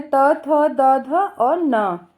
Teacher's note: ध का उच्चारण स्थान दंत्य है, जिसमें त थ द ध और न।